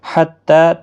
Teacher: تا کے اوپر کھڑی زبر ہے، ایک الف کی مقدار کے برابر کھینچ کر پڑھیں گے